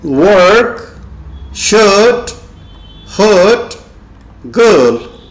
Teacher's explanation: R is silent when it's followed by consonant sounds, for example, P, B, etc. Here R becomes a longer A.